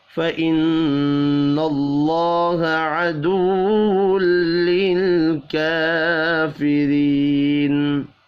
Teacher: नून मुशद्दद पर गुन्ना करेंगे। अल्लाह का नाम ज़बर की वजह से पुर पढ़ा जाएगा।